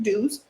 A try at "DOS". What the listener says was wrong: Like you say the initials.